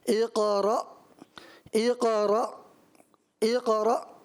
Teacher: یہاں پہ قاف میں قلقلہ تو کرنا ہے، لیکن حمزہ ساکنہ کو بھی واضح پڑھنا ہے